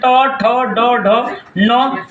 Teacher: इन सभी वर्णों का उच्चारण स्थान है मुर्धा है